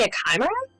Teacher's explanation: the H has to be silent, so it's not like a ch sound. It's like a k.